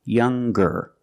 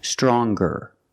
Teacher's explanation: when we change these adjectives with ER or with est we're going to pronounce the G sound the hard G